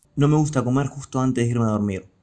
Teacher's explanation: in Rioplatense Spanish there's a tendency to aspirate s sounds, resulting in a pronunciation like a h sound, like H in English.